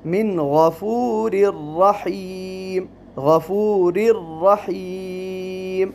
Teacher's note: یہاں تنوین ہے اور تنوین کے بعد حرف را آیا ہے جو کہ حرف ادغام کا ہے لیکن بغیر غنہ کے